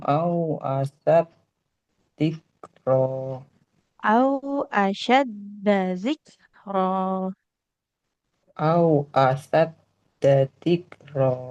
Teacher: Nah, huruf synya enggak bertasdid, enggak boleh as au asyadza. Yang kita tekan huruf dalnya saja. Dalnya enggak boleh panjang.